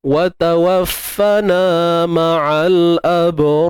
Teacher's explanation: Jumpa alif mat. So, huruf ra mati sebelumnya alif mat, maka perlu dibaca dengan tebal